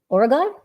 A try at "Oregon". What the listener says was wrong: no gin on the end of the OREGIN. Ain't no gin.